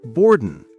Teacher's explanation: Pronunciation tip. Notice how native speakers often say boarding more like boardin, without the strong G sound at the end.